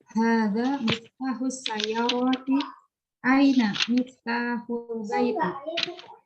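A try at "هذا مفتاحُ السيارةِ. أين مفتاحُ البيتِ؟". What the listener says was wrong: Iya, sip. Bagus.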